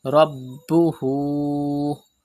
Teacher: Pronounce ba with emphasis because ba is a qalqala letter and it is mushaddad in this word, and there is hamza after ulta pesh.